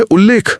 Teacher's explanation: और ल के साथ अगर त के बाद ल आए जैसे उत प्लस लेख में तो त खुद ल बन जाता है और शब्द बनता है उल्लेख।